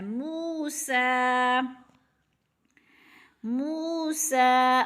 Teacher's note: جتنا کہ الف مدہ کو کھینچنا ہے اتنا ہی کھڑی زبر کو کھینچنا ہے